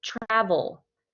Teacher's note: if I say the word travel, the stress is on the first syllable of the word travel